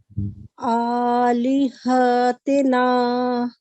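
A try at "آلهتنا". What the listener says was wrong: Okay, I hope you felt that you prolong this ha. So you shouldn't, because it has only a short stroke on it. Okay, a fatha letter, fatha stroke, sorry.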